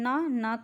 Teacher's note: न का होता है दंत और नासिका दोनों